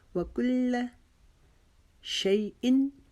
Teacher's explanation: و کل، کاف کو باریک پڑھیں گے، لام کو تشدید کی وجہ سے رکاوٹ سے پڑھیں گے